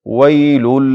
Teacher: ویل واو معروف تلفظ سي، شونډې مکمل راغونډې سي.